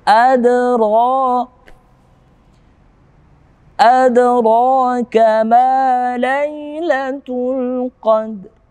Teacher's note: Adra, ada dal yang mati berada pada tengah-tengah ayat. Hukum tajwidnya adalah qalqalah sughra atau qalqalah pantulan yang ringan.